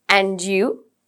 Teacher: when we say and you it's rising intonation rising intonation means your voice goes up and it stops there